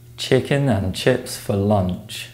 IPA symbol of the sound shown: tʃ